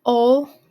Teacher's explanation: Omitting final consonants, ol for old, so just getting rid of that D sound at the end